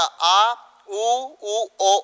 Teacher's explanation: ठीक है, अब पश्च स्वर की बात करते हैं तो जीभ का पिछला भाग कार्य करता होगा। जिस स्वरों का उच्चारण करते समय जीभ का पश्च भाग कार्य करता है उसे पश्च स्वर कहा जाता है